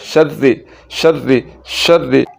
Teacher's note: रा के नीचे ज़ेर है तो उसको ब्रीक पढ़ना है